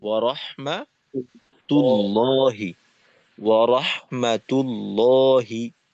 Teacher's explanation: আর শেষে আল্লাহ শব্দ মোটা হবে